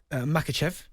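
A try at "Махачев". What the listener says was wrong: Mahachev. You don't pronounce the K, just like Habib and Volkanovski.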